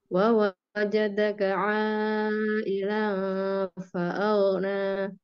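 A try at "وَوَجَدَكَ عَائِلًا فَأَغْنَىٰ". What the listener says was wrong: Sedikit lagi, agak panjang sedikit, Bu. Wa wajadaka 'ai.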